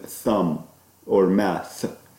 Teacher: this th is a voiceless dental. It's actually better term to say interdental because the tongue is between the teeth. Interdental, voiceless interdental fricative.